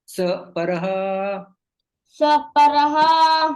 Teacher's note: यहाँ यहाँ पर संधि हो जाती है, विसर्ग का लोप चला जाता, विसर्ग का लोप हो जाता है